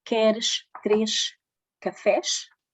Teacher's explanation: o S articula-se sh